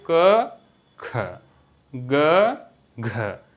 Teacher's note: जैसे आप बोलिए क ख ग घ, देखिए ग को जल्दी से बोल के घ में ज़्यादा समय ले रहे हो आप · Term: महाप्राण